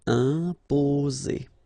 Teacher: only one S between the two vowels, so it's the sound Z